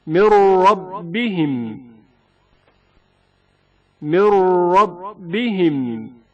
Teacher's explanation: حرف را سے پہلے نون ساکن کا ادغام